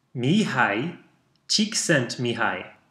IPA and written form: ˈmiːhaɪ ˈtʃiːksɛntmiːˌhɑːjiː (Mihaly Csikszentmihalyi)